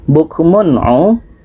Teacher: Bukmun'u, tanwin bertemu a tidak dengung.